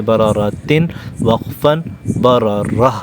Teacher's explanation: وقف کرتے ہوئے ہم اس پر ساکن لے آئیں گے اور اس تا کو ہم ہا بنا دیں گے